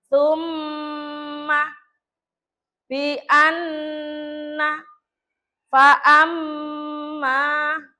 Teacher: Jadi mem tasjidnya atau non tasjidnya didengungkan. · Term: gunah